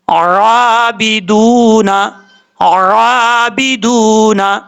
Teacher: ایک الف کی مقدار اس کو لمبا کر کے پڑھیں گے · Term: کھڑا زبر